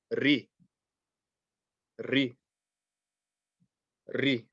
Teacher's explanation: And the reason why is when the ra has a kasra on it, when the ra has a kasra on it, it's going to be read like a light letter. It will not be heavy. Okay, so the ra with the kasra is ri.